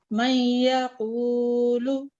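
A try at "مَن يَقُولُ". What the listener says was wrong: जी अच्छा है, थोड़ा सा और नाक की जड़ से अगर आप आवाज निकालें।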